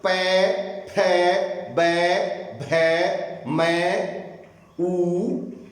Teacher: होठों ने विशेष क्रिया की है इसमें, तो यह है ओष्ठ्य वर्ण